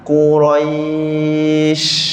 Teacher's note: Bila kita berhenti jadi baris mati kan. Jadi angin kena lama. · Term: hamas